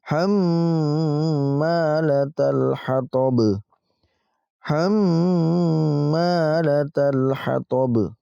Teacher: Ini termasuk mim berharokat tasydid. Maka kita dengungkan ya dan kita panjangkan dengungnya itu selama 2 ketukan. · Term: gunnah musyaddadah